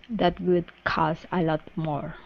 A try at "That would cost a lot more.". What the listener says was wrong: Costa. Make sure to connect that T to the A. That would cost a lot more.